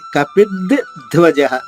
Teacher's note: రెండు అక్షరాలు అయినప్పుడు ఒకటి అల్ప ప్రాణం మొదటిది, రెండవది మాత్రమే మహాప్రాణంగా ఉంటుంది. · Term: ద్విత్వం